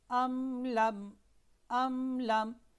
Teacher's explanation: دیکھیں یہاں پر میم ساکن ہے، اس کے بعد لام آ رہا ہے، ٹھیک ہے، ام لم، تو ہم نے میم کو واضح کر کے پڑھنا ہے، ام لم، ام لم، ایسے نہیں پڑھنا ام لم، نہیں، یہ قواعد تجوید کے اعتبار سے غلط ہو جائے گا. یہاں پر غنہ نہیں ہے بلکہ صرف واضح کر کے پڑھنا